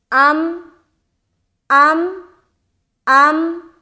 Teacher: जब हम हमज़ा को मीम से मिलाएंगे तो हमारी आवाज़ स्टॉप हो जाएगी, लौटती हुई मालूम नहीं होनी चाहिए। हालांकि मिलाने का काम दोनों में होगा, हर हर्फ में मिलाने का काम होगा, लेकिन सिर्फ हरूफ कलकला वाला हर्फ हो तो उसमें हम टकराते हैं अपनी आवाज़ को और हमारी आवाज़ टकरा कर हमारी तरफ वापस लौटती है।